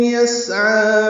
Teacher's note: عین کھڑا زبر ہونے کی وجہ سے 2 حرکات لمبا کریں گے